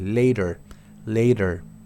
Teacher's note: Se pronuncia como una R, prácticamente entre dos vocales.